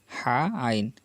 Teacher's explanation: দুইটি হরফ চাপ দিয়ে বলবো, কণ্ঠনালীর মাঝখান থেকে উচ্চারিত হয় দুইটি হরফ